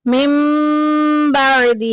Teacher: عجل من بعدہ میں دیکھیں نون ساکن کے بعد با آگئی، جو کہ اقلاب کی فیملی کا اکلوتا ایک ہی ممبر ہے، تو یہاں پہ نون کی آواز کو ہم نے میم سے بدل دینا ہے۔ من بعدہ، ہی کے نیچے دیکھیں کھڑی زیر آ گئی، ایک الف کے برابر لمبا کریں گے۔